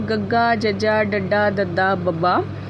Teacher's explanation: ਨਾਦੀ ਅਤੇ ਅਲਪ੍ਰਾਂਤ ਧੁਨੀਆਂ ਹਨ ਗੱਗਾ, ਜੱਜਾ, ਡੱਡਾ, ਦੱਦਾ, ਬੱਬਾ